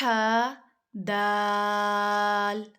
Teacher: ح دال، ہا کے آگے الف ہوتا ہے، ہا کو کم لمبا کرتے ہیں نا ہم، 1 الف جتنا جسٹ، اور دال کو 3 الف جتنا